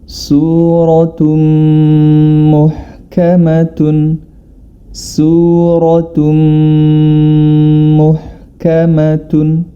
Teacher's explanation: Kita ketahui bersama bila mana nun sukun atau tanwin bertemu dengan mim, maka cara membacanya adalah dia dimasukkan huruf ta tersebut ke dalam huruf berikutnya, yakni pada huruf mim, dan harus disertai dengan gunnah atau dengung. Maka hukum bacaan di sini adalah idgham bi gunnah.